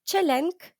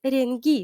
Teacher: ке перестає бути глухою, а стає дзвінкою ґ